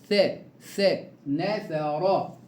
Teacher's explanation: الثاء حرف لثوي يخرج من طرف اللسان